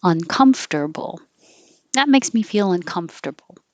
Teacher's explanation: it sounds like because now it's three syllables comfortable comfortable and even if it's uncomfortable you don't emphasize the UN